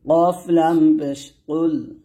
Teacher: কফ এখানে মোটা উচ্চারণ করতে হবে যেন কাফের মতো না হয়।